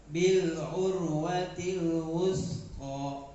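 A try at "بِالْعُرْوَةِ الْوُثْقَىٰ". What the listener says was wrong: Jangan Nah, jangan mendesis. Kalau mendesis nanti jadi sin. Ulang. Itu pakai sa.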